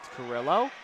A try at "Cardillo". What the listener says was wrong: Cardillo. There's a D in there. Cardillo.